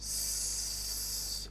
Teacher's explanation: you will notice that there is no vibration. they don't vibrate at all. So that's that's voiceless or unvoiced.